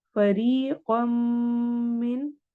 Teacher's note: कम में इदगाम हो रहा है, हमने यहाँ पे गुन्ना करके पढ़ना है , फरीक़म मिन, मिन में इजहार होगा इसलिए हम इस नून · मिन में इजहार होगा इसलिए हम इस नून की आवाज को क्लियर वाजिया करके पढ़ेंगे